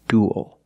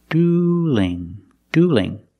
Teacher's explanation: duel with a dark L and dueling with a light L because the L is between vowels in the word dueling